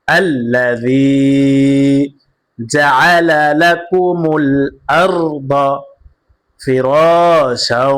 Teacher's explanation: দুই জবরের বামে অক্ফ করিলে এক আলিফ টানিয়া পড়তে হয়, মাদ্দে আওয়াজ।